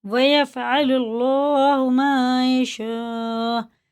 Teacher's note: یہ مد متصل ہے، 5 الف کو برابر سے کھینچ کے پڑھنا ہے